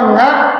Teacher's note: kalau nga itu karena ada unsur nunnya, dia akan lebih cenderung keluar dari hidung